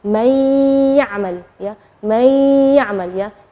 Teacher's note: Nunnya tidak jelas tapi ada suara dengung gunnahnya. May. Jadi itu namanya idgham. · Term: idgham bi gunnah